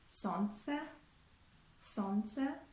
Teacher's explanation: Or in the word солнце, солнце, we omit the letter L